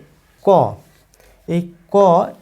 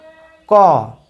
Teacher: এই ব্যঞ্জন বর্ণটি উচ্চারণ করতে গেলে এই কয়ের সঙ্গে একটি অ ধ্বনি উচ্চারিত হয়